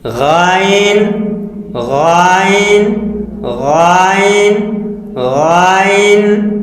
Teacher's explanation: غین خا حلق کے منہ کے جانب والے حصے سے ادا ہوتے ہیں